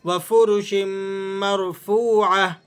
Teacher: را کو آپ نے موٹا پڑھنا ہے، را ساکن ہے، لیکن اس سے پہلے والے حرف پر زبر ہے، تو اس لیے آپ نے اس کا اعتبار کرتے ہوئے را کو موٹا پڑھنا ہے۔ واو مدہ کو یہاں کھینچ کر پڑھا جائے گا